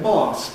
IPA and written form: mɑːs (mass)